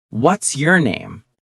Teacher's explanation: It goes up slightly on what's, and then down at the end on name. · This falling intonation is very common for information questions in English.